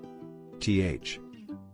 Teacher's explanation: T with aspiration as in take